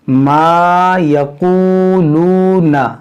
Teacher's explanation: नून को नहीं खींचेंगे, नून मुतहर्रिक है।